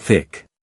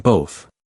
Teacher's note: Feel how the TH in thanks, thorn, thick, and both all require you to push air through without using your voice